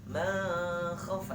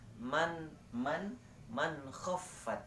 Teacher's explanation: Tapi harus diizharkan, jelaskan dan terang. Nun sukunnya dan kha-nya.